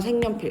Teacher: 그래서 색연필 니은 첨가의 이제 대표적인 예시, 니은 첨가 되면서 비음화까지 일어난 단어다 · 그래서 요 연 자리에 니은이 들어가거든요. 그리고 얘가 앞에 기역이랑 니은이 만났으니까 기역이 이응으로 바뀌죠